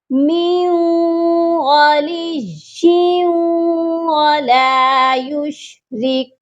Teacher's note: یا واو دو زیر یوں، یہاں پر بھی ادغام ہوگا، یا کو واو مشدد کے ساتھ ملائیں گے اور غنہ بھی کریں گے کیونکہ تنوین ہے یا کے نیچے۔